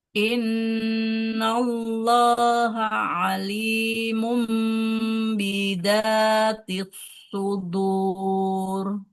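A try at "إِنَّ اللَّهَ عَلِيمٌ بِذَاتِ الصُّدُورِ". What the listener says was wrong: Huruf zalnya bisa. Bisa. Nah, jangan kayak mukeddal ya. Innallaha alimum bizatis sudur.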